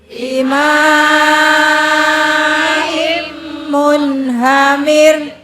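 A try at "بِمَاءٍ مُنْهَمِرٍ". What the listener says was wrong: Jangan gede-gede, mir. Rohnya kudu ngikut, nggak boleh nggak ngikut. Kalau rohnya ini nggak ngikut, artinya bukan curah, dicurahkan dengan air. Bimaim munhamir itu dengan air curah, bercurah, masya Allah. Itu kalau rohnya nggak ngikut, repot.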